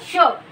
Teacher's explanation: पुढचं बघा, श, श, स या व्यंजनाच्या उच्चारस्थानाच्या वेळी मुखवाटेद्वारे जोरात बाहेर फेकली जाते. बघा, श, श, श, स या व्यंजनाच्या उच्चाराच्या वेळी हवा मुखवाटे जोरात बाहेर फेकली जाते. बघा, श आता जोरात आपण म्हटलो श किंवा एखादा श वर्ण शब्द शायद हा शब्द जर म्हटला तर शा म्हणताना आपलं जोरात तोंड आ होतं, म्हणजे त्याच्या वाटे काय आपली हवा बाहेर फेकली जाते. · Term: उष्मे